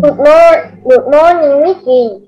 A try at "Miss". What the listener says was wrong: Miss cái chữ S đâu?